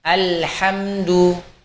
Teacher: Bainiyah ini karakternya ketika sukun adalah mengalir kira-kira setengah harokat.